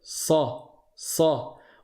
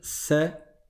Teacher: à l'arrière la langue elle va monter vers le palais elle va monter vers le haut et c'est ce qui va donner cette force dans dans cette lettre et cette emphase c'est-à-dire le côté grave et emphatique donc on va dire sa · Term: le SAD